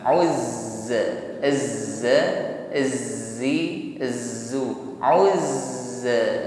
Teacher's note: Saat menekan huruf zai, alirkan bunyi hurufnya, bukan tertahan. · Dan ketika bertasydid maka sifat as-shafir, desisnya ini tadi semakin kuat. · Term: huruf zai tasydid